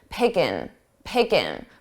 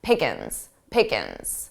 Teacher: Native speakers often drop the G sound or make it very soft with ing.